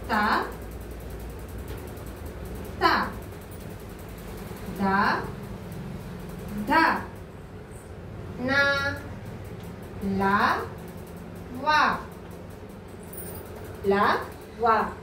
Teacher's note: దంతాల సహాయంతో వీటిని పలుకుతున్నాం కాబట్టి వీటిని దంత్యాలు అంటారు